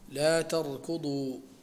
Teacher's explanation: الراء هنا تقرأ بالتفخيم